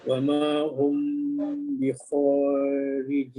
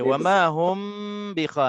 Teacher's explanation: Mim mati bertemu dengan ba, hukumnya ikhfa syafawi dengung 2 harakat.